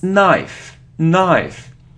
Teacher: so we don't pronounce K